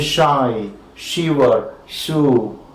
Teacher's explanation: your front of the tongue is against the roof of the mouth, that is of course the hard palate, and the tongue is just gliding towards, or rather quickly moving towards the alveolum, and you call these the palato-alveolar fricatives, right?